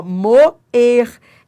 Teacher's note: Eu tenho aqui um hiato. Uma vogal seguida da outra em sílabas diferentes